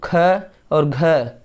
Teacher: महाप्राण की बात करें तो ख और घ ये महाप्राण है। इसको आप उच्चारण करिए, देखिए अधिक वायु मुंह से निकलती है